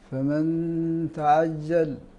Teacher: النون الساكنه قبل حرف الاخفاء الذي هو التاء هذه مخفاه